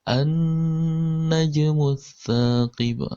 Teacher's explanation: huruf nun bertasdid itu selalu kita baca gunnah. Jadi gunnah artinya didengungkan, ditekan sepanjang 2 harokat.